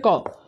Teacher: এখন কটা আমরা যখন উচ্চারণ করি তখন কয়ের সাথে কিন্তু একটা অ কিন্তু উচ্চারিত হয়। এই যে ক যোগ অ, সেখান থেকে হয়েছে ক।